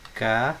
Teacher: Vejam que a sílaba tônica é o ré, ou seja, a sílaba tônica é a última. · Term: oxítona